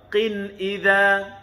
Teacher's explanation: Makhrajul qaf. Pangkal lidah.